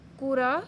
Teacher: را جو ہے وہ اس کو موٹا پڑھیں گے کیونکہ اس کے اوپر زبر آ رہی ہے